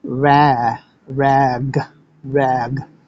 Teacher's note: in order to make the hard G sound, our tongue has to move way up high in the rear and seal against our velum, or soft palate. And when it does that, it forces the A to change into an E.